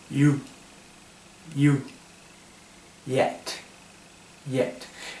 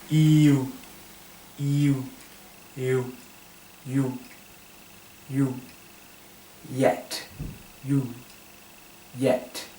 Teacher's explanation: y no pegan tanto en la parte trasera de la lengua no se pega tanto a la parte trasera del paladar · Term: sonido de y más sutil